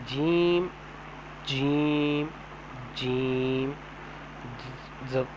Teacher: زبان کا بیچ اوپر کے تالو کے ساتھ جب لگتا ہے تو یہ جیم، شین، یا نکلتے ہیں